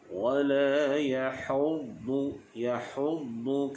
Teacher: Huruf dad bersifat dengan itma', tebal, dan juga isti'la. Jadi huruf dad ini pastikan tepi lidah kita ni diangkat kena pada garham.